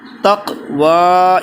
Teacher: اس میں واو کے اوپر کھڑا زبر، اس کو ایک الف کی مقدار کھینچیں گے